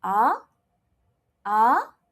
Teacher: the challenging one will be the second tone. Just remember as if you're asking people question. So it goes ah, ah, it goes up. And remember when you're saying it, don't move your neck, don't move your head.